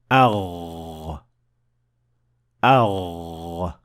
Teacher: You should definitely feel some vibration on your throat. So the root of the tongue is raised to the point of almost connecting to the farthest area of the soft palate, producing the Ghain.